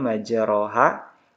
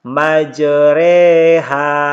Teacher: fathah yang dimiringkan ke kasrah dan alif yang dimiringkan ke ya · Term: imalah